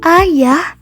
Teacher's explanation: Jadi, fonem A pada kata ayah, ayah dibaca tidak lepas, karena pada saat penyebutan fonem A tersebut, bunyi A langsung tergeser oleh alat ucap menuju faringal atau yang menyempitkan faring sehingga bunyi A menyatu dengan bunyi H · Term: suku kata tertutup